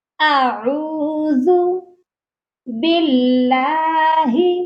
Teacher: ذال soft letter ہے، اس کو نرمی سے پڑھنا ہے، زو یہ آواز نہ آئے۔